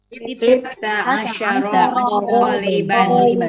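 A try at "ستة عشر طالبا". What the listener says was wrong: Bukan sitta, sittata. Sittata asyara taliban.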